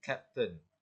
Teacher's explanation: For the consonant, the K sound referring captain. This is a voiceless velar plosive, where the back of the tongue contacts the velum and releases air. This sound is clear in captain and would be pronounced strongly in Eliza's Cockney accent.